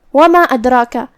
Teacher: مد جائز منفصل کا معنی ہے کہ حرف المد پہلے کلمہ کے آخری میں ہو اور اس کی وجہ جو کہ حمزہ ہے وہ دوسرے کلمہ کی شروعات میں آئے۔ مد جائز منفصل میں ہم اپنی آواز 2 سے 4 مد کے برابر لمبی کریں گے۔ کلمت ادراکہ میں یہاں دال پہ جزم ہے تو ہمیں دال کو ہلاتے ہوئے یہ کلمہ کو ادا کرنا ہے۔